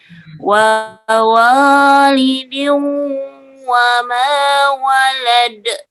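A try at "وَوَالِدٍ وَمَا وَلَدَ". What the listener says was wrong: Ya, alhamdulillah.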